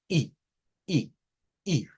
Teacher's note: es como un sonido como que se cae verdad el sonido no se sostiene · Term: la i corta